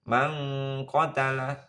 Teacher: ikhfa berdengung ya samar dengung